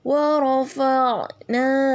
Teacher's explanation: kemudian yang kedua na-nya itu mat tabi'i dipanjangkan 2 harokat ya